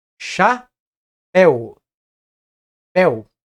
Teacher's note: Aqui na sílaba pel, nós temos o encontro da vogal E, formando um ditongo decrescente com a semivogal U. Esses dois fonemas, o E e o U, ficam em uma mesma emissão de voz.